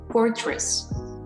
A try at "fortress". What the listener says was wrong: Perfect. Very good.